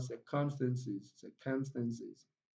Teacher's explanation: Sis contains short e, it's equally a weak vowel, so the syllable is not stressed. So the only syllable that contains a strong vowel sound here is sir, sir. So it takes the primary stress. The syllable takes the primary stress, the first syllable.